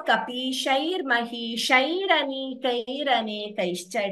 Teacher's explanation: the visarga followed by a, if we choose to chant both padas together, the visarga is replaced by r. · Repha means r in Sanskrit. So instead of the visarga, the r is added whenever visarga is followed by a. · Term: visarga repha sandhi